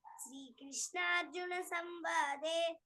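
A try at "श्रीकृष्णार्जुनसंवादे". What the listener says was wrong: శ్రీ అనేది వినిపించలేదు క్లియర్ గా. శ్రీకృష్ణ అర్జున. మేబీ మీరు అని ఉంటారేమో, నాకు ఆన్లైన్లో వినిపించలేదేమో తెలియదు నాకు.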